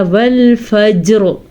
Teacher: را کو ہم نے پر پڑھا کیونکہ وقف کی وجہ سے را کی زیر ختم ہوگی، بلکہ را پہ ساکن آ جائے گا وقف کرنے کی وجہ سے۔